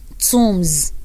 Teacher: when B comes after the M, the B is silent. So you stop at M.